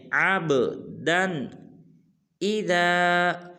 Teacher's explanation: جب عین کو با ساکن کے ساتھ ملائیں گے تو با کو قلقلہ کریں گے